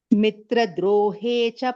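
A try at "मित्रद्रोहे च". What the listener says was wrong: there is one Ditvam, Baini. Mitrad drohe. Id is there. Mitra drohe.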